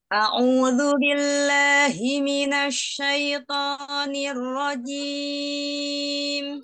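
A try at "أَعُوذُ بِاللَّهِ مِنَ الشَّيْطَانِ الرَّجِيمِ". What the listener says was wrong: Ya, bagus sudah tidak digesek tapi giginya masih rapat. Ini terbuka, buka. Bukanya cuma ya, jari aja gak masuk. Gim. Gim.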